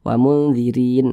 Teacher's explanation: Huruf ra yang memiliki tanda baca kasroh ini juga dibaca tipis, dibaca tarkik.